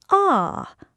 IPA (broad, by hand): ɒ